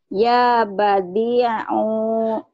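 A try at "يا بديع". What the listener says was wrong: Dalnya panjang. U-nya ya. Pendek.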